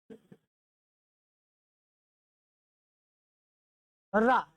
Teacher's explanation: उच्चारण के समय जीभ में थोड़ा सा कंपन होता है, इसलिए इसे प्रकंपित या लुंठित वर्ण कहते हैं।